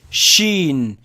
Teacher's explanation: sheen, it's not exactly touching the hard palate, but it's letting a little space so the wind can pass.